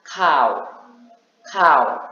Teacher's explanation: kau, kau, dengan nada turun